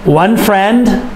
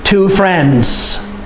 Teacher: for singular you must hear the d for plural it's not necessary to hear the d sound